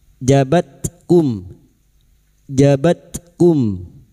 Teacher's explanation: Huruf ta yang memiliki sifat hames dan sidah. Maka pada saat disukun bunyinya jabat kum.